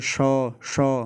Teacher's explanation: तालू पे जीभ लगती है, शौ, गर्माहट भी पैदा हो रही है, शौ, ठीक है।